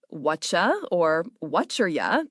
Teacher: Then you have phonetic reductions. What are you becomes whatcha or whatcherya, depending on speed and accent.